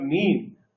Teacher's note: In the production of the word mean, the soft palate is lowered during the production of sound m, n. Even the vowel in the middle is produced with the lowering of the soft palate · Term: nasal sounds